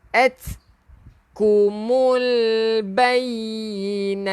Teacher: At, keluarkan angin yang dipanggil hamas